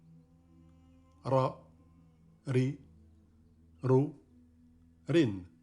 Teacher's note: au R roulé qu'on entend dans la première lettre du prénom espagnol Raoul.